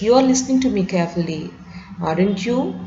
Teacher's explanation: the person has some kind of uncertainty, so he can raise his voice when he made this kind of question tag